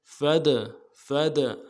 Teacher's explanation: فا کو دال کے ساتھ ملانا ہے، دال کے اوپر جب جزم ہو یعنی ساکن ہو تو قلقلہ ہوگا۔